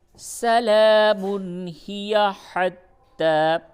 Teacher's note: تنوین کے بعد حروف حلقی ہے، اس جگہ پہ اظہار کیجئے